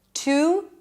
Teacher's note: instead of saying the full oo sound, I'm just pronouncing it again with a schwa